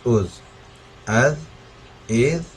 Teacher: ذال جو ہے اس طرح پڑھنا ہے کہ ہماری جو ٹونگ ہے، زبان ٹیتھ کے سینٹر میں آنی چاہیے. ٹیتھ کے سینٹر میں آئے گی تھوڑی سی، تو اس کو ہم نے اس طرح سے ادا کرنا ہے.